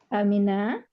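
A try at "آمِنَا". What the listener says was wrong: A-nya panjang tuh Bu. Amin. Pola kata kerjanya kan af'ala ya. Amin.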